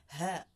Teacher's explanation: Ito naman ang ha na galing yung tunog sa diaphragm or sa dibdib.